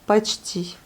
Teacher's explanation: le O n'est pas accentué, on le prononce comme le A